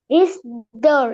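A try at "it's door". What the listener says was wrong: ইটস, ইটস, ইটস, উচ্চারণ করো। হ্যাঁ, ইটস ডোর। আগে টি, এরপরে S. ইটস, ইটস ডোর, ইটস ডোর।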